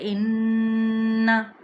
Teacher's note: یہاں پر غنہ کی آواز جو سی ہے وہ ناک کے بانسے سے ہی ادا ہوگی، یعنی زبان کا کنارہ تالو کے ساتھ نون اور میم کو، نون کو خصوصاً جو ہم پڑھتے جیسے ان، زبان اوپر تالو کے ساتھ چپک کے ہی اس کا غنے کی ادائیگی کرے گی